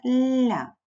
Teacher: Звертаю увагу, ля подовжений ль. Позначаємо м'якість приголосного і дві крапочки.